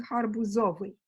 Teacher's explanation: Now for a disyllabic suffix like ovi, the best stress comes from the plural, and that's indeed what we get. We're getting harbuzovi, okay, with the unstressed stem coming from the plural.